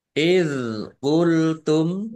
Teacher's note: dal sukun bukan qalqalah. Jangan dipantulkan. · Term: zal sukun